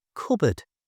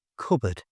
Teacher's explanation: To say it correctly, just don't pronounce the P.